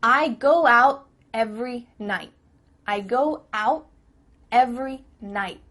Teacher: your tongue is at the top of your mouth. You're about to make the T sound, but no air goes through, so it's just stopped at the top of your mouth. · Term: cut off the T